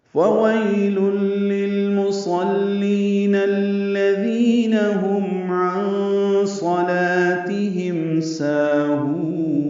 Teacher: مدہ ہے، دو حلقات لمبا ہے، ہم میں اظہار شفوی ہے، عن صلاتهم میں نون ساکن کے بعد صاد آنے کی وجہ سے اخفا ہے